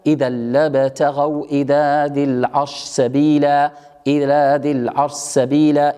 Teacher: إذا مباشرة تدغم الشين ها هنا في السين